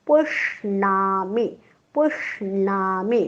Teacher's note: पोटफोड्या श म्हणताना जीभ टाळ्याकडे जाते पण टाळ्याला चिकटत नाही आणि बाणातला न म्हणताना मात्र जीभ टाळ्याला चिकटते.